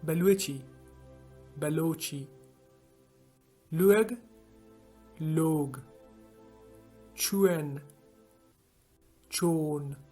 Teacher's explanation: words that consist of W in Makorani accents are pronounced with O in a Karachi Balochi accent